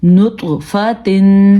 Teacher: نون پیش تو نط، فا زبر فا، نطفہ، تا دو زیر تن، نطفتن. توا کو پر بھی پڑھنا ہے اور توا پہ قلقلہ بھی ہو رہا ہے